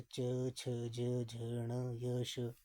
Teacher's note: तालव्य यानी कि तालु से च, छ, ज, झ, ण, य, श, ठीक है, ये आपके तालव्य व्यंजन है, इनका उच्चारण तालु से हो रहा है